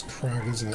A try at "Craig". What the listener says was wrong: Crag. You call Craig Crag, like Craigslist.